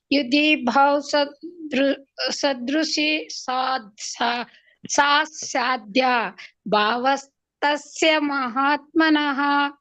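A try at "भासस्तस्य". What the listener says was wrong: ಇದು ಭಾವ ಅಲ್ಲ ಭಾಸಸ್ತಸ್ಯ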